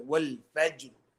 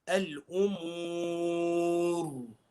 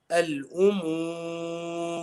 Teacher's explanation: It has a dhamma or a fatha. We will be reciting the ra as a full mouth letter.